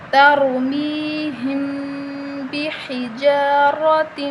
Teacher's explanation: ہا کو باریک پڑھیں، را کو موٹا پڑھیں۔